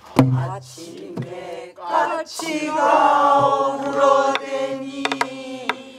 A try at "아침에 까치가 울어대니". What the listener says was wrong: 아침에 까치가 아침에가 펑퍼짐을 갖고 길게 꼬리를 달면 까치에서 힘이 모아져 갖고 탁 하는 게 안 되지. 이게 아침에 까이 해야 까가 나올 거 아니야.